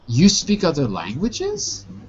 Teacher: Now that is a statement that I create as a question because of my rising intonation.